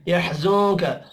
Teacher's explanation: नून साकिन के बाद काफ है, इख्फा हकीकी होगा